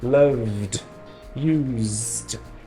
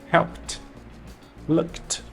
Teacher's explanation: são os verbos que a gente chama de voiced os que vibram e os voiceless os que não vibram